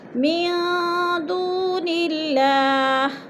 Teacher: نون ساکن کے بعد، دال حروف اکفا میں سے ہے تو ادھر اکفا کریں گے، آواز کو ناک میں چھپا کر پڑھیں گے۔ دون اللہ، دو پہ وہ مدہ ہے، وہ ساکن سے پہلے دال کے اوپر پیش ہے تو وہ مدہ اللہ پر باریک پڑھا جائے گا، کیونکہ اللہ سے پہلے لفظ نون کے نیچے زیر آ گیا ہے تو ادھر اللہ کو باریک کر کے پڑھیں گے۔